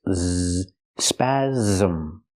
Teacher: The S makes the Z sound like zebra with a voice. Z, spasm. It has two syllables.